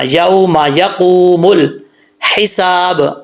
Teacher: یوما یا زبر واو یوما، اس میم کو لمبا نہیں کرنا